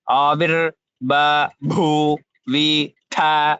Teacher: first alpa prana, then mahaprana, then the tha mahaprana